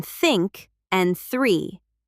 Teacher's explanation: the soft th in think and three, and the voiced th in the and this. Tongue between teeth.